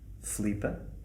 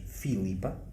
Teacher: Portanto, nós não pronunciamos o i, vocês pronunciam o i.